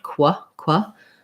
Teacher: Also, I would say rewriting this one to know what the sounds are. So the QU sound, those are actually a K and a W sound, qua. And then the AR actually says or in quarter and quarterly.